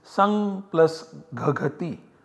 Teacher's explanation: substitutes this anusvara by the nasal parasavarna of gha, which is ng, and so the output is sang plus ghaghati.